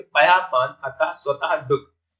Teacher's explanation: इनमें जो विसर्ग लगा है उसका प्रयोग हम हा की तरह बोलने में करते हैं।